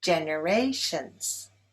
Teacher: Generations is stressed on the third syllable.